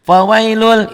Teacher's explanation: Apabila nun mati atau tanwin bertemu dengan huruf idgham bila gunnah lam dan ro. Nah, diidghamkan, dileburkan, tapi tidak ada penahanan, tidak ada dengungnya ya.